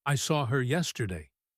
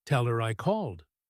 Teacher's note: The word her turns into just a vowel sound. If you are listening for the echo h, you will miss it.